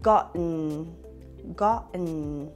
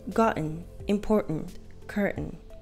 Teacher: So instead of pronouncing the T sound as a T, you will pronounce it as a stop T, which is an abrupt stop in the airflow.